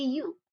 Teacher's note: English speakers often just say you with an upward tone.